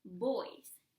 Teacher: if you want to say boys, as in boys, you need to use your two lips together.